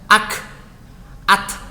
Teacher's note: Syiddah bunyinya tertahan, jadi tidak boleh memunculkan bunyi ketika dia dibaca sukun. Ketika dia dibaca dengan sukun, maka yang keluar adalah udaranya saja, bukan suaranya. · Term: syiddah dan hamas